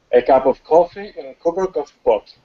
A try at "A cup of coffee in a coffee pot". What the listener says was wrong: Great. Now it was nice.